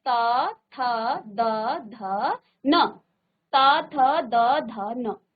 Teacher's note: इसके बाद देखिए त, थ, द, ध, न, तो इनका उच्चारण जब अपने मुंह से आप करेंगे त, थ, द, ध, न, त, थ, द, ध, न, तो देखिए दांतों से इनका उच्चारण हो रहा है। आपकी जो जीभ है वो दांतों को टच करती हुई इसका उच्चारण कर रही है। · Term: दंत्य